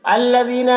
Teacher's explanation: दाल को बारीक पढ़ेंगे